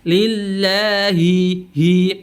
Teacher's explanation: hilangkan sifat khofanya dengan menjelaskan bunyi huruf H.